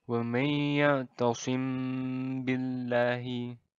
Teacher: ketika mim mati bertemu dengan baik mim mati bertemu dengan Pak cara membaca Ikhfa Syafawi ini adalah didengungkan dengan panjang dua harakat